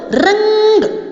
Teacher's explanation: जो चिल लगाया जाता है उसे हम बिंदु बोलते हैं। ठीक है, इसके उच्चारण में जो म या न के समान जो है निकलती है आवाज़, ध्वनि निकलती है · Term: अनुस्वार